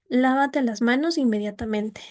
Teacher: Lávate las manos inmediatamente sube, eh asciende el tono, se se baja otra vez un poco y se mantiene y va bajando progresivamente hasta que desciende por completo